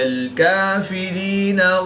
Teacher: یا ساکن سے پہلے زیر ہے تو یا مدہ ایک الف یعنی 2 حرکات کے برابر کھینچ کر پڑھیں گے